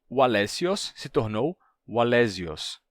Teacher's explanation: Esse nome passou por uma sonorização do S entre vogais e Wallesios se tornou Wallesios, certo?